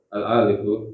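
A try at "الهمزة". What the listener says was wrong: Yang dibaca hamzahnya bukan alifnya. Alif itu cuma tempat menumpangnya hamzah, ya. Jadi yang dibaca alhamzatu.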